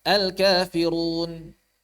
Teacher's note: ketika damah maka lidah pangkalnya naik maka justru sulit ditipiskan secara sempurna